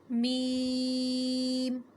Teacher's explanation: دونوں ہونٹوں کا تری والا حصہ آپس میں ملے تو ادا ہوتا ہے میم